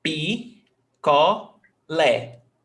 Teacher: Lé is the stressed syllable. Picolé.